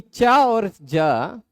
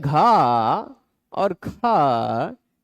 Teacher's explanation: च और ज यह दोनों अल्पप्राण वाले हैं। इसमें घ और ख यह महाप्राण वाले हैं।